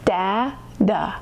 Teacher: the second syllable doesn't sound like T even though it's spelled with a T. It sounds like D.